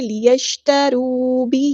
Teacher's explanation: نہیں، لیشتروا، واو مد آ گیا تو مد اصلی کریں گے، را جو ہے ہمارا یہاں پہ ہیوی لیٹر ہے، پورا ادا کریں گے